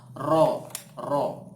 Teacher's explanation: terasa getaran di ujung lidah itu rok-rok maksudnya bunyi Roro ini keluar dari ujung lidah tepat setelah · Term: huruf ro